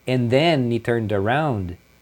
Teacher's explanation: geralmente eles não falam o D, fala só, como se fosse a letra N